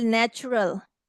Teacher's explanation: in this word t is saying the ch sound because this process is called assimilation